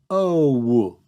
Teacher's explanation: For American English, O is not one constant thing, it morphs over time. Think about your jaw as you say the sound O. It closes a bit after you start making the sound. That change in mouth shape creates the change in the sound.